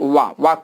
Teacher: दांत और ओठ से उच्चारित होने के कारण इसको आप दंतोष्ठ कहते हैं